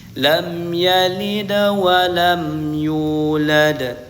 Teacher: huruf dal di sini dibaca qalqalah sugra memantulnya kecil sedikit matulnya.